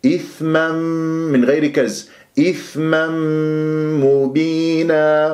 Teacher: إي إثما ثاء مخرج ضعيف تحتاج إلى جريان للصوت والنفس إثما تنوين فتح جاء بعدها ميم إدغام بغنة إثما من غير كز إثما مبينا وأضم الشفاه في الميم لما